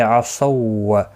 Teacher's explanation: صاد مستعلیہ ہے، پر پڑھا جائے گا ، اور یہ والا واو ساکن جو ہے نہیں پڑھا جائے